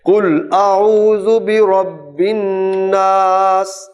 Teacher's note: یہاں نون شد کے ساتھ ہے، غنہ آئے گا، اور برب الناس میں را کو پر پڑھنا ہے